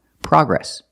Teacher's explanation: We don't say progress. The American pronunciation is progress with the short a sound like hot and stop.